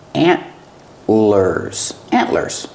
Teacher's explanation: It's a stop T. The tongue goes up and stops the air.